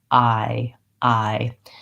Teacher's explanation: it glides from A to E. If you just think about I start with a vowel that's open and my tongue is down, and then I close and relax. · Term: I diphthong